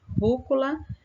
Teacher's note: Rúcula, a sílaba tônica está na antepenúltima sílaba, é uma palavra proparoxítona.